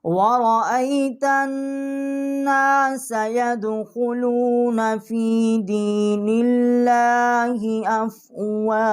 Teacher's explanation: واو جو ہے یہ دونوں ہونٹوں کے درمیان سے اس کو مخرج ہے